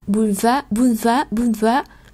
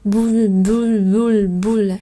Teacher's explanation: Như vậy cái chữ L đó chúng ta sẽ đọc rất là nhẹ, gần như là nó không có thoát hơi ra.